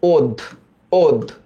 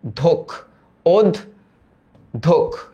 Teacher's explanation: এই জফলার কারণে আদ্য অ ও এর মতো উচ্চারিত হয়েছে